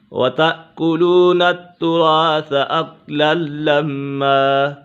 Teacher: میم مشدد ہے، میم مشدد میں ہمیشہ غنہ ہوتا ہے